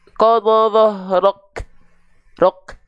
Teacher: Jadi dia nahan, tertahan dulu nafasnya baru keluar. Qadha rok. Jadi jadi tahan keluar, tahan percikan. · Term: kaf